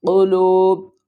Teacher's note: قاف پیش قو، قاف کو ہم پر پڑھیں گے، موٹے حروفوں میں سے ہے۔ لام واو پیش لو، قلوب۔